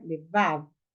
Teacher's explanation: A sílaba tônica, por enquanto, é onde? O vav, né? Levav.